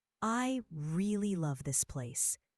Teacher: Stress on really and love.